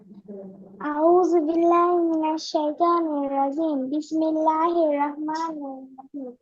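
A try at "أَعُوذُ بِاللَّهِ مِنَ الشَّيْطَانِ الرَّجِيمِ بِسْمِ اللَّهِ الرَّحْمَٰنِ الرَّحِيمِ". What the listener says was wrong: এটা তো হইলো না তো। তুমি আউযু বিল্লাহ বললা বাংলা আউযু বিল্লাহ, বিসমিল্লাহটাও বললা বাংলা বিসমিল্লাহ। একটু আগে যে বললাম রহমানির রহিম, এগুলা উচ্চারণ করার সময় হাটা সুন্দর করে উচ্চারণ করতে হবে। আমরা যে হরফগুলো শিখলাম, ঠিক আছে, সঠিক স্থান থেকে সঠিকভাবে শুদ্ধভাবে।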